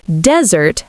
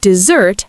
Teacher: So, in speech, you can tell dry land from the others by the stress. Desert has first syllable stress, dessert has second syllable stress